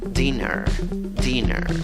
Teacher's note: En la escritura tienes una I, en la pronunciación también tienes una I, pero es la I que se duerme, no es la I fuerte, no es la I que se ríe, no hagas una I muy fuerte. En la segunda sílaba tienes una E, en la pronunciación tienes schwa, la que no es ni A, ni E, ni O.